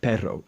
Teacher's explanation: the tongue is coming to the front of the mouth and it's trilling there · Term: doble R